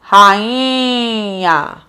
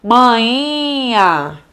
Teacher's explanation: O NH provoca o efeito de nasalização.